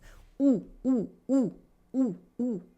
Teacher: Your lips are rounded, ooh, ooh, ooh. And your mouth is almost completely closed and your tongue is in the back of the mouth.